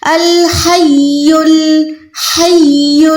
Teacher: یہاں پر اگر آپ نے پراپر آیت الکرسی کو پڑھنا ہے تو ہا کو حلق کے درمیان سے ادا کر کے یا کے ساتھ ملائیں